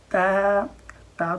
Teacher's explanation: تا کو بھی ہمیشہ باریک پڑھا جاتا ہے، کوشش کرنی ہے کہ اس کی آواز موٹی نہ ہو جائے، یوں نہ ہو جائے تا تا، یہ نہ ہو جائے تا۔